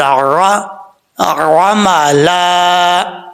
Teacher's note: عین کو پڑھتے ہوئے عین کے مخرج سے نکالنی ہے آواز، حمزہ کی آواز نہیں آنی چاہیے، عملا نہیں پڑھنا۔